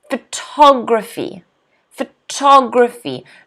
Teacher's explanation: next word people get confused with this word okay photography photography notice the stresses on the second syllable